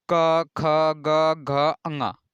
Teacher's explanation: इसे आप बोलेंगे तो आपको लग रहा होगा कि ये इसका उच्चारण स्थान कंठ से आ रहा है।